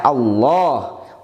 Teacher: lamnya dibaca tebal tapi hanya pada lafadz Allah saja yang didahului harakat fathah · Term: tafkhim